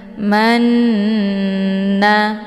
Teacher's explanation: dinamakan dengan aqanah musyaddadah cara bacanya Nun nya didengungkan yaitu Manya ditekan kemudian ditahan lebih kurang 2 harokat sambil dileburkan suara ke dalam huruf nun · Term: ghunnah musyaddadah